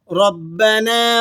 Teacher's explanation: ربنا میں را کو آپ نے پر کر کے ادا کرنا ہے، را کے اوپر حرکت ہو تو موٹی پڑی جاتی ہے۔ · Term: را موٹی